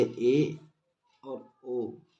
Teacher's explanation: संवृत की तुलना में मुख का भाग थोड़ा अधिक खुलता है उन्हें हम अर्ध संवृत स्वर कहते हैं